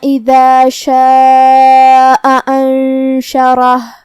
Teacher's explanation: مد واجب متصل کا معنی ہے کہ حرف المد اور اس کی وجہ جو کہ حمزہ ہے دونوں ایک ہی کلمہ میں ہو. مد واجب متصل میں ہم اپنی آواز 4 مد کے برابر لمبی کریں گے. کلمت انشرہ میں یہاں شروعات میں حمزہ ہے، یہ حمزہ قطع ہے تو ہمیں اسے ظاہر کرنا ہے.